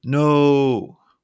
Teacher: holding the o sound on the same pitch it sounds more dramatic another example is I'm so tired where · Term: held or sustained pitch, held pitch